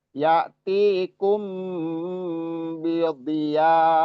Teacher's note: bidhiya panjang 4 sampai 5 harokat bertemu dengan hamzah di depannya.